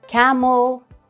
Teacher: the stress is on the first syllable in the word camel